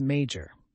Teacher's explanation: The second word is major. The word major has two syllables, with the stress on the first syllable. Major has several meanings and can be used as a noun, an adjective, and a verb.